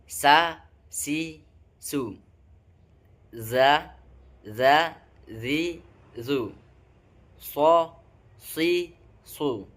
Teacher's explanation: Kemudian yang ketiga, ujung lidah ditempatkan antara gigi atas dan gigi bawah, yaitu tempat keluarnya huruf sin, zai, dan sod.